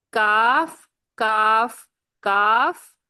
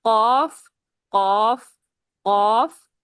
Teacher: اس میں کاف باریک اور قاف مستعلیہ ہے، موٹا ہے